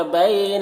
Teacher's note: بینا میں یا لین ہے، اسے نرم آواز کے ساتھ جلد پڑھیں گے